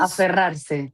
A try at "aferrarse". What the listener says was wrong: You got to roll the R. So make sure you do that.